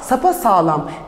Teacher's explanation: sapasağlam dediğinizde A sesinin türediğini görüyorsunuz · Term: ünlü türemesi